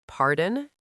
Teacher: If you say it with a flat voice like pardon, it sounds like you're bored. You need to use a rising intonation.